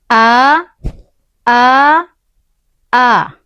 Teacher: ketika kita mengucapkan huruf hamzah yang berharkat fathah itu akan terasa bergetar di pangkal tenggorokan